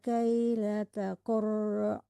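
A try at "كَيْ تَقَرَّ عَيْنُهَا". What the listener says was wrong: Nggak ada lainnya. Kai takar aja bukan kaila takar.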